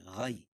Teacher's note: یا ساکن سے پہلے زبر ہو تو یا لین ہوتا، اس کو نرم آواز کے ساتھ جلدی پڑھتے